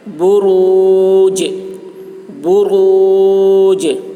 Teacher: جیم میں قلقلہ ہوگا